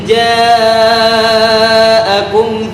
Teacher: huruf ja dibaca panjang karena adanya mad wajib muttasil.